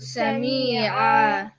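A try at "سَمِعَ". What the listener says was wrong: That's too long. Sami'a. If you said Sami'a, there would have been there would have been a ya here, like Sami'a. So Sami'a.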